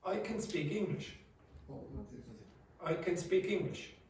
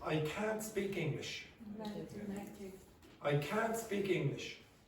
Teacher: Okay, so the positive is going to be shorter. Okay, if there's the T at the end, it extends.